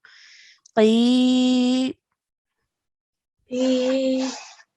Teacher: It's a really thick and heavy sound that comes from the middle of your throat, okay? So really try and focus on where that sound is being made from. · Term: qaf